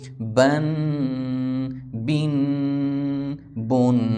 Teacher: با کا مخرج دونوں ہونٹوں کو آپس میں ملایا جائے گا تو با ادا ہوگا